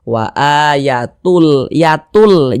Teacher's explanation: Jangan dibaca Yatun tapi dibaca Yatul kemudian tidak didengungkan · Nah, cuman di sini kan yang kita temui tanwin. Nah, jadi bunyi tanwin itu dia masuk ke huruf lam, melebur dia ke huruf lam, sehingga kita baca wa ayatul, yatul, jangan dibaca yatun tapi dibaca yatul. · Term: idgham bila ghunah, idgham bila gunnah